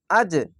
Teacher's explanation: কলকলা ধাক্কা মেরে নিচে সাউন্ড আসবে